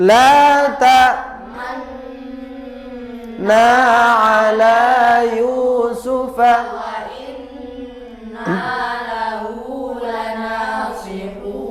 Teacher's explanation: Ismam artinya bibir mencucu atau moncong di tengah-tengah dengung sebagai isyarat bunyi dhammah.